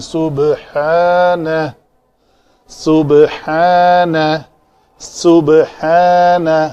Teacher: دونوں دانتوں کو جوڑیں گے سین کو ادا کرنے کے لیے، با کے اوپر قلقلہ کریں گے